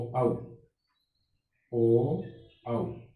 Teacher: उ और ओ औ का उच्चारण करते समय होठों की आकृति हमारी गोल हो जाती है, वृत्त की आकृति बन जाती है। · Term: वृत्तमुखी स्वरों